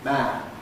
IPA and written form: mæn (man)